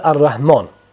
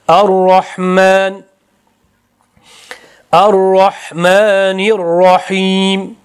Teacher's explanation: Ar-rahman aksincha ro yo'g'on o bilan, mim ingichka a bilan aytiladi.